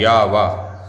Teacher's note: माने दंत भी और ओष्ठ भी, तो दांत और ओष्ठ दोनों को मिलकर के वा बोल पाते हैं। वा बोलने का प्रयास करेंगे तो आपको पता चल जाएगा कि दांत के साथ साथ ओष्ठ का प्रयोग भी इसमें हो रहा है। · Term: दंतोष्ठ